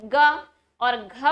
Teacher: ग और घ बोलते समय स्वर तंत्रिकाओं पर, गले में जो तंत्रिकाएं उन पर थोड़ा सा दबाव ज्यादा पड़ रहा है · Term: सघोष